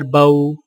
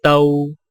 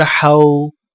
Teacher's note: واولین ہونٹوں کو اوپر کی طرف کھولنے کے فوراً بعد گول کرتے ہوئے نرمی سے بغیر کھینچے پڑھیں۔